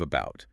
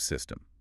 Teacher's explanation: the schwa sound, that little weak, unstressed sound